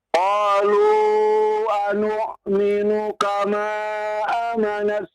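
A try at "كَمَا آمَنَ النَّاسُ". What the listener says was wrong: A-nya panjang. A-nya panjang. Iya, betul.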